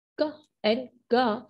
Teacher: when you try to produce these two sounds क एंड गा, you can feel the lower side of your tongue or the back side of your tongue touching the soft palate